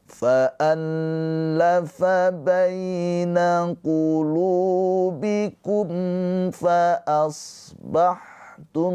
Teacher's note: Di sini ada mim sukun. Mim sukun bertemu selain mim dan ba. Hukumnya adalah izhar syafawi. Mimnya dibaca dengan jelas.